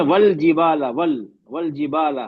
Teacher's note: پھر ناک میں آواز گننا نہیں ہوگا